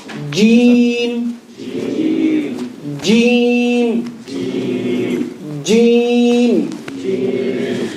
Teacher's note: Middle of the tongue, meeting with the top of the palate.